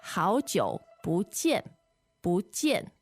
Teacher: When you put these words together this way, the tones are second and fourth. Yes, so 不 should be a 4th tone. But in this case, it becomes a 2nd tone.